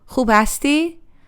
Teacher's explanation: The tone rises at hasti and it feels warm, inviting.